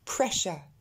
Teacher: Et vous remarquez que ce U-R-E se prononce simplement E. Pressure. Et ce sera le cas la plupart du temps avec les mots qui finissent en U-R-E.